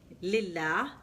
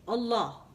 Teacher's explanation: In some places, the lam is lighter, lillah, and some places it's heavy, Allah.